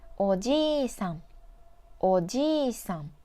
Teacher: This has the same vowel i next to each other, so extend the ji character like おじいさん、おじいさん, not おじいさん、おじいさん. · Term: long vowel